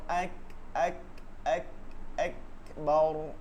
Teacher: এটা খেয়াল করতে হবে যে কাফের মধ্যে একটা খ উচ্চারণ হয় না, খ, খয়ের একটা ভাব থাকে, এর জন্য এটাকে হামস বলে